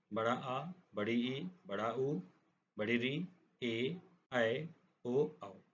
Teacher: इसके पश्चात हम आते हैं दीर्घ स्वरों पर। इनके उच्चारण में दो मात्राओं का समय लगता है। वे दीर्घ स्वर कहलाते हैं।